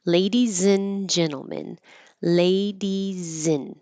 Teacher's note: I'm not going to say and with a D. I'm not going to make an a with the vowel. I'm going to shorten it to in or un, either way.